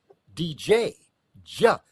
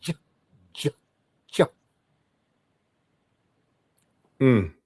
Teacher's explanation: the way you form your mouth is starting with a D, but you end up with a soft G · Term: sound J